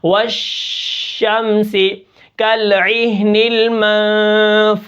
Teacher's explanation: شین کے اندر جو آواز ہے وہ کثیر ہے، سارے حرفوں سے کثیر ہے، یعنی زیادہ ہے، زیادہ مقدار میں ہے۔ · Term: تفشی